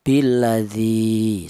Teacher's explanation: Billadzi itu satu harakat. Berhubung ada ya matinya di sini maka dipanjangkan dua harakat. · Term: mad thobi'i, matobi'i